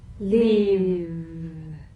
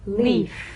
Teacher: One has vocal cord vibration, the other is unvoiced.